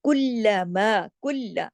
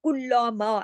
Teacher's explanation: लाम पे तशदीद है, कुल्ला दो दफा पढ़ा गया ना लाम, सख्ती से जोड़ के, लेकिन बारीक तरीके से, उसको मोटा नहीं करना, कुल्लामा ऐसे नहीं कर देना, कुल्लमा ना, बारीक तरीके से खूबसूरती से पढ़ना है।